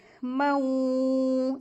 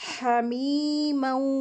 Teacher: میم کو واو میں ملا کر کے غنہ کر کے پڑھیں گے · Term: ادغام